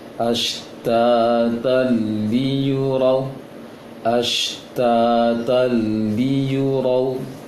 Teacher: Walaupun baris fathah lainnya miring, namun setelahnya ada huruf lam, anggota dari 8 huruf yang tidak menyebabkan dengungnya tanwin. Jadi langsung gabung tanpa dengung.